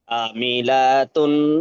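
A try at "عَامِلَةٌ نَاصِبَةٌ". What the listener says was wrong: আটা টান দেন। একটু টান দেন, আইনটা টান দেন।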